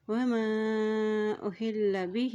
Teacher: ہا کے نیچے دیکھیں کھڑی زیر ہے، اس کو ایک حرکت لمبا ادا کریں گے